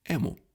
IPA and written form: ˈɛ.mʊ (emu)